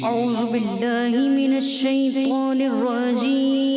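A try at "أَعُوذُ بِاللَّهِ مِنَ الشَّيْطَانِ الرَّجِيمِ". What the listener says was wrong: آپ سے غلطی ہوئی ہے، اعوذو نہیں پڑھیں، اعوذو ذال دوبارہ.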